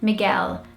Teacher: here in the UK, British people say it more often. And that L sound lingers a lot more.